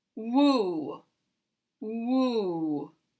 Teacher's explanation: the W, the tongue is lower, and the oo is a high tongue in the back